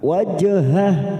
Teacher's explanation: karena mati di tengah kalimat kita pantulkan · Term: qalqala sugro